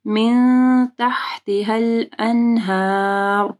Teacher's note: را ساکن ہو جائے گی اور را کو ہیوی پڑھیں گے کیونکہ ہا کے اوپر زبر ہے